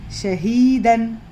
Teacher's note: سینے والا ہا ہے. حلق کا وہ حصہ جو سینے کی طرف ہے، وہاں سے آنے والا ہا